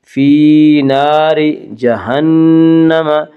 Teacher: نون مشدد غنہ ہوگا، غنہ کی مقدار ایک الف ہے